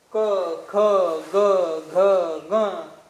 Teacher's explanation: स्पष्ट कंठातून हवा येते, दुसरीकडे कुठेही आदळल्या जात नाही, किंवा मग जीभ दुसरीकडे कुठे लागत नाही.